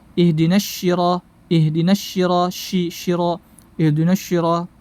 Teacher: Kesalahan selanjutnya adalah merubah huruf shad menjadi huruf shin.